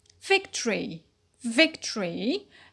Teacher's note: Here in victory, we have a dropped schwa in victory. So normally it's a victory, but it's a dropped schwa.